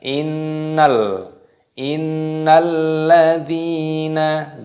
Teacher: di sini ada hamzah wasol, ini dianggap tidak ada, fokus pada lam tasdidnya. Jadi diidghamkan, dimasukkan. Innalladzina, dalnya matobi'i ada ya sukun, dipanjangkan dua ketukan.